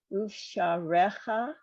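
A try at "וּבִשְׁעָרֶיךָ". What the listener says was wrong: You're leaving out the second letter, which is a vet with a 1 dot E under it.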